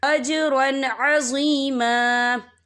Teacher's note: وَإِذًا لَآتَيْنَاهُمْ مِن لَّدُنَّا أَجْرًا عَظِيمًا، یہاں دیکھیں اجرن، وا کے پر تنوین ہے، تنوین کے بعد جو ہے عین آ رہا ہے اور عین جو ہے حروف ہلکی کا ورڈ ہے، تو ہم یہاں اظہار کریں گے، ہم اسے بنا غنہ کے پڑھیں گے